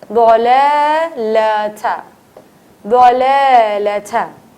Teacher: لا دو الف کے برابر, ل ایک الف کے برابر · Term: کھڑا زبر